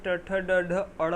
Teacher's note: इसे मूर्धा से बोला जाता है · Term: ट वर्ग